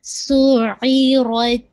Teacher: را کو آپ ہیوی کریں گے اور تا پہ ویسے ہی شدہ اور ہمس کے ساتھ ادا کریں گے